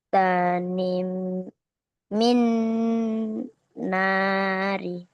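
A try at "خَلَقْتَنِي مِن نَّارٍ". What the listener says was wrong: Jadi kalau diwakafkan bagaimana huruf ro-nya dibaca? Disukunkan ya, seakan-akan harokatnya sukun. Contoh, khalaqtani min nar. Wakaf itu berhenti ya. Jadi kalau kamu baca ayat yang barusan nih, yang kamu baca, kamu kan berhentinya di huruf ro kan? Maka ro-nya itu kamu sukunkan. Khalaqtani min nar. Cuma kalau kamu lanjut, nggak kamu berhentikan, itu jadinya kayak gini. Khalaqtani min narin.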